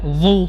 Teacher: Dhu kita menebalkan dalam kondisi dhammah.